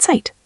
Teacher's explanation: Zona, sun, begins with a buzzing sound, and German Z is TS, like cats without the K.